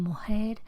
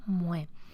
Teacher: En el otro extremo, en el de la desaparición, algunos hablantes pierden la velar por completo. No es solamente una aspiración mujer, sino un grado cero fonético mue.